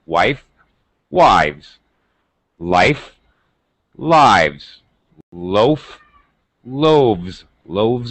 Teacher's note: voiced so now my pronunciation of the S becomes a z sound · The rules are the same. The V is voiced, so now it sounds like the pronunciation of the S sounds like a Z.